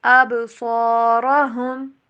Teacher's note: ابصارہم، با کے اوپر کلکلا، صاد الف را تینوں کو موٹا یہاں پہ کریں گے